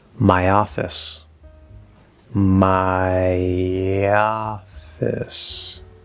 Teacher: Here we're going from A, which also has that same effect of creating a small y if the next sound starts in a vowel sound. So we're going ya, my office.